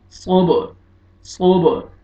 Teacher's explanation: با قلقلہ ہے، double sound آئے گا